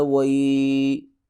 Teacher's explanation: یا ساکن سے پہلے زبر آ جائے تو لین کرتے ہیں، تھوڑا سا کھینچ کے نرمی سے پڑھتے ہیں